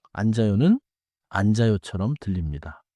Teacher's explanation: 니은지읒 겹받침에서는 지읒이 다음 음절로 이어져요.